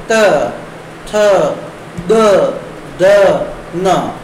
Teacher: त वर्ग को बोलने के लिए हमारी जो जीभ है वो दांतों के स्पर्श करती है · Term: दंत्य